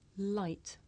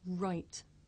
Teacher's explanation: I make the Le sound with the front part of my tongue behind my teeth and I make the r sound by making my lips come out and pulling my tongue back